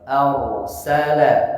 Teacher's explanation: Kemudian ayat ke-3 dan ke-4 huruf ro sukun diawali dengan fathah, cara bacanya ditebalkan ro-nya.